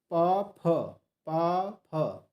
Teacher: प फ, ठीक है, ये ओष्ठ से बोले जाते हैं।